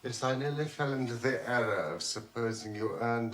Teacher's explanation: There is a distinct swing to this accent. It comes across due to the differences between the stressed and unstressed syllables. This accent leaps up and down into the landing points in a phrase.